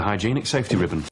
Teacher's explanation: in British English, it would be pronounced hygienic, with a long E sound in the middle